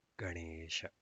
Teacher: Ganesha always uses the Talavyasha, which is the palatal sibilant. It is different from Sa, which is the Dantasa, and Sha, which is the Murdhanyasha.